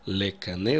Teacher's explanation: так как у нас последняя буква корня Алеф ле Кане мы слышим гласный звук в конце Э